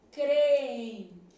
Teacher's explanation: Só que se eu for um pouquinho mais a fundo, e às vezes a gente tem conhecimento para isso, a gente pode pensar assim, esse M tem som de I, creem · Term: ditongo fonético